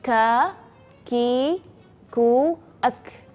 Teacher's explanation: Ka, perhatikan ada hams, ada nafas yang keluar atau yang berhembus ketika kita melafalkan huruf kaf